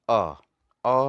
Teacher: मध्य स्वर, जिन स्वरों के उच्चारण पे जीभ के मध्य भाग काम करते हैं, उन स्वरों, जैसे कि अ में जीभ का थोड़ा मध्य भाग काम करता है।